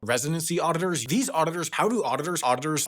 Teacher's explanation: there are only 2 alveolar articulations in succession, D followed by a T